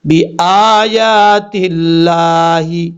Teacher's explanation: تا کو لام سے ملائیں گے، جس لام کے اوپر شد ہے اس لام کے ساتھ ملائیں گے، اور بیچ میں الف ہے، اور شد والی لام سے پہلے ایک لام ہے اس کو بھی چھوڑ دیں گے۔